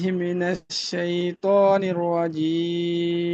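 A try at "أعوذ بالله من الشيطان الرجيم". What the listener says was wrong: এইখানে যে শব্দটা আছে এটা কিন্তু জিম না জাল জিম হচ্ছে শক্ত আর জাল হচ্ছে পাতলা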